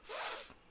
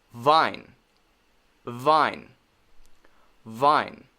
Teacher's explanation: when you make the v sound you need to add your voice